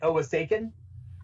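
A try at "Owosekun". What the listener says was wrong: Owoshikan. Owoshikan. Yeah, the S is pronounced more like a SH.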